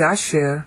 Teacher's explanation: Asher, here it's accented on the last syllable.